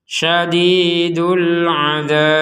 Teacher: huruf ba ini dibaca sukun. Karena dibaca sukun maka wajib dipantulkan.